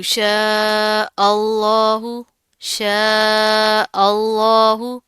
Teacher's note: لفظ اللہ سے پہلے زبر آ رہا ہے تو یہ موٹا پڑا جائے گا